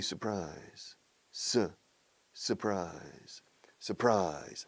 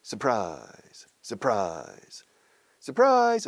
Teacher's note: The second syllable receives all the stress.